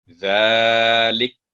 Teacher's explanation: ذالک جو وقف ہوگا، فتح جو سکون میں بدل جائے گی